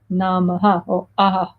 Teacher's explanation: So many of our bijas, our seed mantras, they have what we call the visarga at the end, which is kind of like namaha or aha. It's like a kind of echo sound, a vibration at the end.